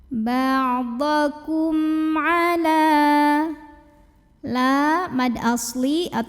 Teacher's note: selain mim dan ba di sini hurufnya adalah huruf Ain maka mim sukun dibunyikan dengan jelas jadi bunyi m nya jelas tidak perlu kita tahan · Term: izhar syafawi